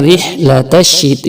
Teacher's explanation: را کے نیچے زیر ہے تو اس لیے را کو باریک پڑھا جائے گا